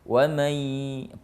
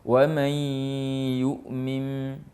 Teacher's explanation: Wa may, posisi lidah kita sudah berada di posisi menempati atau mau mengucapkan huruf ya. Ya, tapi sambil berdengung. Ya, itu namanya idgham bigunna.